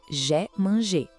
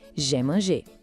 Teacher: Esse som do I é bem fechadinho, quase um E.